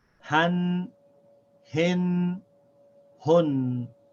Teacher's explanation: it's the same sounds as the short vowels except we add a noon sound at the end of every vowel sound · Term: tanween